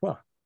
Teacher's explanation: And it's spelled WH, and I speak a form of English where the WH is hwa. It's still preserved.